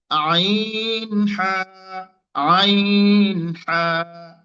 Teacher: কন্ঠের মাঝখান থেকে দুটি অক্ষর উচ্চারণ হয়